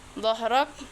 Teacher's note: huruf ro berharokat fathah, dibaca tafkhim atau tebal.